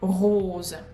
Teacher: When we pronounce O fermé, closed O, we pull our tongue back and we close our mouth. And also make sure you pronounce Z, rose, and not S. It is voiced sound here.